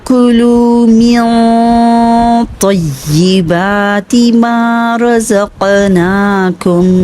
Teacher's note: रज़क़नाकुम में क़ाफ में कलकला होगा, साकिन आया हुआ है · وَالسَّلْوَىٰ كُلُوا مِن طَيِّبَاتِ مَا رَزَقْنَاكُمْ، यहाँ पे देखिए म्यों इख्फा का रूल आ रहा है, नून साकिन के बाद तो आ गया है, मोटा पढ़ा जाने वाला हर्फ है, तो इसलिए इख्फा की आवाज़ को भी मोटा ही अदा करेंगे। और या मुशद्दद को बहुत अच्छा मजबूती के साथ तो के साथ मिलाएंगे, ढीला ढीला नहीं करेंगे, ठीक है।